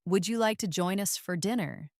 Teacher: First, the question with a rising tone.